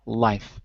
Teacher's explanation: As we go down the chart, although we're always in the same position, the alveolar position, the difference is if you say life, your tongue is touching the alveolar ridge on the top